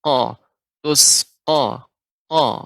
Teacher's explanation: Jadi benar-benar kita ucapkan dia di pangkal tenggorokan, ya, tenggorokan paling atas, ya, bukan pangkal ya, tenggorokan bagian paling atas. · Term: huruf qaf